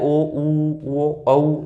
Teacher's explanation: होठों का आकार वर्त की भांति गोल हो जाता है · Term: वर्ताकार